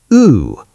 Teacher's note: U is oo, a tight, unique French vowel sound. Point your lips out.